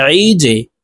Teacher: জিম কলকলার হরফ নিচের দিকে ধাবিত করে ধাক্কা দিয়ে উচ্চারণ করব। · আইন হরফকে হলকের মধ্যখান থেকে চাপ দিয়ে উচ্চারণ করতে হবে।